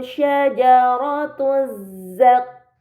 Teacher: lam pada lam syamsiyah tidak dibaca, langsung dibaca huruf setelahnya. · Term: alif lam syamsiyah